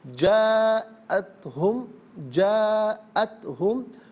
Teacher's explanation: وَلَوْ جَاءَتْ ہم، جا میں آپ دیکھیں الف مدہ، اس پر مد متصل ہے، مد کی علامت ہے، اسے مد واجب بھی کہتے ہیں، مد متصل بھی کہتے ہیں۔ منیمم اس کو 4 الف کی مقدار کھینچ کر پڑھنا واجب ہے، زیادہ سے زیادہ اس کو 6 الف کی مقدار کھینچ کر پڑھ سکتے ہیں۔